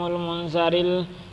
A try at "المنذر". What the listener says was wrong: تھوڑی سی غلطی کی آپ نے، منظر نہیں پڑھنا، منذر.